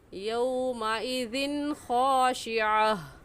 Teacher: यौमइज़िन पर गुन्ना नहीं करेंगे क्योंकि तनवीन के बाद हरूफ हल्की में से खा आ गया है